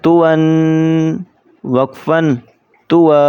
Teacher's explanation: آگے جو آپ کو یا نظر آ رہا ہے وہ پڑھیں گے نہیں اس کو، وہ صرف خوش خطی میں آتا ہے، لکھائی میں آتا ہے، وہ پڑھا نہیں جائے گا۔ اور تنوین کے جو اوپر دو زبریں ہوتی ہیں وہ وقف کی حالت میں اس کو الف پڑھیں گے